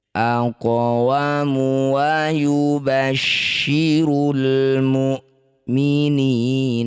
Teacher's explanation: Qof sukun di tengah bacaan disebut qalqalah sugro. Cara bacanya bunyi qof dipantulkan. Pantulannya kecil saja. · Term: qalqalah sughra